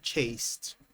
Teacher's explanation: The ed d is pronounced as a t sound here chasteed. The reason is that there is a s sound.